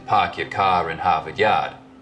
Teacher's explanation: Stereotypical Boston accents, of course, are non-rhotic, meaning no R sounds in park your car in Harvard Yard.